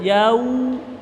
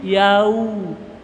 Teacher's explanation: Maliki waw mati, suara u usahakan dimonyongkan, maju bibirnya, yau. Ya, jadi jangan suara o tapi suara u.